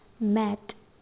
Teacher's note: the oral closure made by the two lips in firm contact the soft pallet has lowered and which resulted in the nasal passage being opened the air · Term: bilabial M